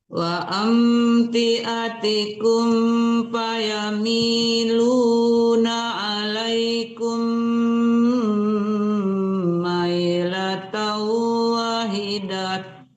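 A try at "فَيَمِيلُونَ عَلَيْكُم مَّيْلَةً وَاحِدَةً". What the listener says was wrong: Panjang wanya, tanya dimatikan jadi tamakuta, jadi ha matinya ya. Nggak boleh dipanjangkan tanya.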